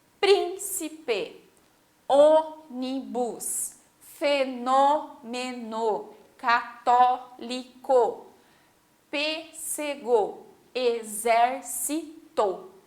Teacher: todas elas são a antepenúltima, ou seja, a terceira de trás para frente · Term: proparoxítona